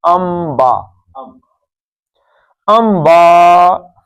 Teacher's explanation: نون ساکن کے بعد با آ جائے تو نون نہیں پڑھتے، کیا پڑھتے ہیں؟ میم پڑھتے ہیں